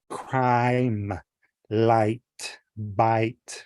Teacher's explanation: So you have the long I where your mouth is more open.